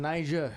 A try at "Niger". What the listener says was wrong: You got to pronounce the R harder.